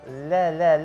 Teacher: Lam tipis bukan debel.